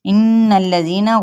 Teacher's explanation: غنہ کرتے ہوئے لام کے ساتھ ملائیں گے